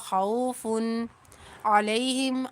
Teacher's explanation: فا دو پیش فن یہاں پر تنوین کے اندر اظہار کریں گے کیونکہ آگے عین حروف حلقی میں سے ہے. والا خوف علیہم عین زبر آ لام یا زبر لئی علیہ ہا میم زیر ہم علیہم.